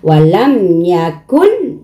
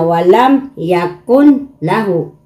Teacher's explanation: So, ang nun sukun, yung ito nun sukun, or minsan nun asakina, or yung mga tanwin, yung fathatan, kasratan, damatan, pag iyon, ang sumunod sa kanilang litra is lam, o di kaya yung ro, na sila ay, ang hukom nito is idgham bilagun na, na pag binigkas mo, walang gun na. Yung nun, itatago mo dito sa lam. · Yung nun, itinago mo dun sa lam.